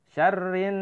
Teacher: Harus dibaca samar. Syarrin, rin agak ditahan ya, itu gunnah itu. Syarrin keluarnya lewat hidung kalau syarrin.